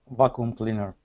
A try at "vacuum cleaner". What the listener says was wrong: Vacuum cleaner. Don't miss your V's. Vacuum cleaner.